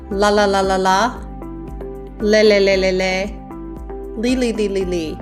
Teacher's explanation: So notice the tip of your tongue goes behind your teeth. And as we go from the la to the le to the li, the back of our tongue goes up higher in our mouth.